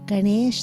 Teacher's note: the tongue is retroflex on the end